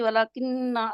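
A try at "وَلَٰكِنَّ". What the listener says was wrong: नहीं, वलाकिन्ना नहीं है, आप देखे खड़ी जबर भी है।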